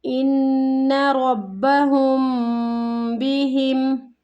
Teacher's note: حمزہ کو نون کے ساتھ ملاتے ہوئے یہاں پہ غنہ ہو رہا ہے مشدد کا